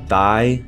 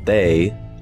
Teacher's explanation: Thigh spells the voiceless th sound, whereas they spells the voiced th sound.